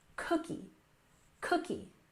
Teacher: We stress that first syllable